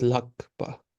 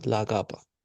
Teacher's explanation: the vowel sound of the suffix gets dropped. So this is lakpa, not lagapa, lakpa, lam.